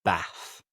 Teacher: in the north of England, we'd say Bath. And the th is almost like an F.